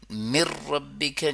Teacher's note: لیکن مر ربک جو ہے اس میں ادغام بلا غنہ ہو رہا ہے